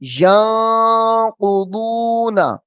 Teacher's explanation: وَمَا يُضِلُّ بِهِ إِلَّا الْفَاسِقِينَ، إِلَّا الْفَاسِقِينَ، إِلَّا الْفَاسِقِينَ، الَّذِينَ، الَّذِينَ يَنقُضُونَ، يَنقُضُونَ، یا کے بعد نون ساکن ہے، نون ساکن کے بعد حروف اخفا آ رہا ہے، تو یہاں پہ اخفا کریں گے یعنی غنہ ہوگا، اور غنے کی مقدار ایک الف کی ہوتی ہے جو ناک کے اندر آواز لے کے جانی ہے۔